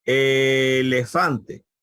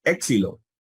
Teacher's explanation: si yo digo elefante es una e larga si yo digo épsilo es una e corta